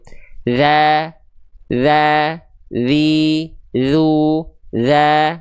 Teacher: Jadi pangkal lidah huruf dalal itu dia nih pangkal lidah tuh ini ini yang disebut dengan sifat istifal di mana ketika huruf dnya ujung lidahnya menempel ke ujung gigi atas pangkal lidahnya enggak naik tapi terhampar di bawah. Oke, jelas sehingga ketika kita lafalkan ringan saja pelafalannya.